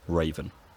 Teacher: in some dialects this first vowel, e, breaks into a diphthong, a gliding vowel